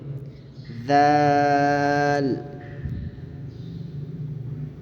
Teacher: زبان کی نوک تھوڑی سی دانتوں سے باہر نکالیں اور کھینچ کر پڑھیں